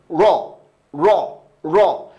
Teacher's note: জিহ্বার উল্টা পৃষ্ঠা আপনি উপরের তালুতে লাগিয়ে তারপরে উচ্চারণ করতে পারেন